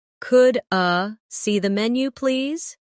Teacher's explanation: In fast speech, could I sounds like could a